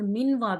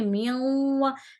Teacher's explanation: نون کی نون وہ غنہ کی آواز ہوگی اور میم کو واو سے ملائیں گے